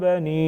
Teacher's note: بنی یا مدہ ساتھ میں چھوٹا مد 2 سے 3 الف کے برابر کھینچیں گے.